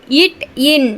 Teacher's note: நாவின் நுனி அன்னத்தின் நுனி